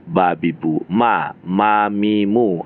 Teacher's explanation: makharijul hurufnya sama-sama antara dua bibir, bertemu bibir atas dengan bibir bawah.